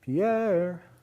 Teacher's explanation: the high is on the second syllable of Pierre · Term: vocative chant